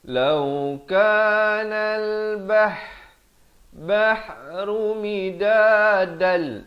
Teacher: Alif lam qamariyah di sini lam dibunyikan.